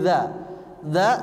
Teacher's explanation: itu pakai ujung lidah ujung lidahnya bergesekan dengan Gigi saya di atas